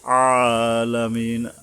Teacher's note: গলা চেপে আইন এবং এক আলিফ টানতে হবে আলামিন এক আলিফ মানে কি এক সেকেন্ডের মত যেমন একটা আঙ্গুলকে